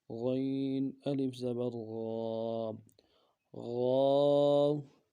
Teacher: غین ہے موٹا پڑھنا ہے اور الف مدہ کو 1 الف دار میں کھینچنا ہے، جمع اور مضبوطی کے ساتھ غین کو ادا کرنا ہے۔